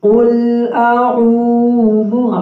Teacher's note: عین اور حمزہ کی آواز مکس نہ ہو